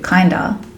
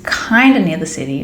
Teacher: kind of becomes Kinder kind of is easily changed into Kinder when we just switch the of into an a